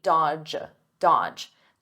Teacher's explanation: the D is silent, the middle D